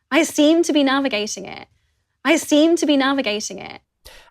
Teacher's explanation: uses a glottal stop at the end of the word 'it' even though she's not connecting to another word.